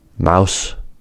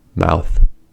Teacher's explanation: The sounds s and th can sound similar since both are fricatives and unvoiced. But s is an alveolar consonant and th is an interdental consonant.